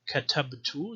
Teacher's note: so the B needs to be voiced, and there's also qalqala between katabtu.